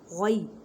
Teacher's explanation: गैन को हलक के ऊपर वाले हिस्से से अदा करें और या लीन का कायदा करें।